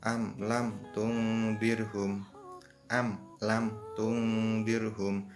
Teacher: bunyi mim disuarakan dengan terang dan jelas, tanpa berdengung di bibir dengan mulut tertutup. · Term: idhar syafawi